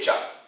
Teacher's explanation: You will find the upper flat of the tongue is hitting the palate.